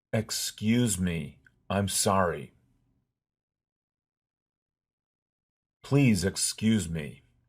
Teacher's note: Notice that the S in this word is a voiced Z sound.